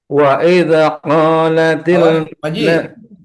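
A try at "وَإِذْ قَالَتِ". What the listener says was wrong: Jangan wa idza, itu masih ada pantulan, itu bilangin pantulannya. Digantung. Wa il qa, bukan wa idza. Jangan dipantulin.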